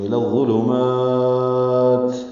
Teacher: پڑھیں گے، میم کو وقفاً لمبا کریں گے، الی الظلمات، اور تا ساکن ہوگا تو ہمس بھی کریں گے، یعنی ہلکی سی سانس کی آواز جاری رہے گی۔